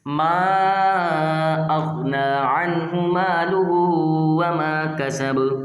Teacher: یہاں پر وقف کی وجہ سے با ساکن ہوتا ہے، اس وجہ سے با کو لوٹا کر پڑھا جاتا ہے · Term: قلقلہ